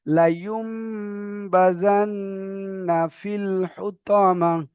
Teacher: নুন সাকিনের পরে বা এসেছে, তাই নুনকে মিমের দ্বারা পরিবর্তন করে এক আলিফ পরিমাণ গুণনা করে পড়তে হবে।